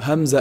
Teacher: Hamza is pronounced from also the deepest part of the throat